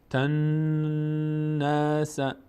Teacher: این نگه داشتن صدا در هنگام تلفظ نون مشدد و از بینی ادا کردن رو بهش میگیم غنه